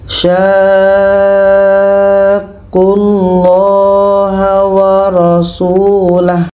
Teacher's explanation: Sya kita panjangkan 6 harokat baru masuk ke huruf yang ada tasydid.